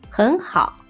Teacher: if we say these two words in their original tones it sounds very weird and it's very hard to pronounce so we change the first one to the second tone